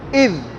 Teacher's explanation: حمزہ زال زیر اذ، یہ زال نرم حرف ہے، زبان کی نوک دانتوں کے کناروں سے لگا کے آواز ختم کر دیں گے